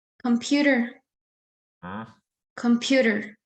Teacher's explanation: I think the second syllable sounds stressed.